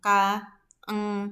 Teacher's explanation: Nah, itu dihasilkan dari lidah bagian belakang nomor 6 dan nomor 14. Jadi langit-langit yang lunak itu akan menghasilkan bunyi K atau eng